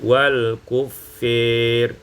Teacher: kemudian diimalahkan fathah fa dan alif menjadi wal kufir. Karena dia kasrah, dia dibaca dengan imalah.